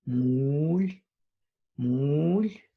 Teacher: Okay, so that has a rising tone. So it started low, low. It's because of the creaky vowels.